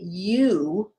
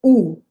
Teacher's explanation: my lips are a perfect circle but the lips jut out a little bit from my face it's a smaller diameter than the letter ole ole was a